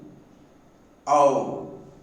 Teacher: When the sound ow is produced, lips are neutral for a and close fully rounded for the second element o.